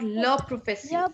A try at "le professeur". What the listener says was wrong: It's not sur. You don't put a lot of stress on sur. It's le professeur. Le professeur. Like that.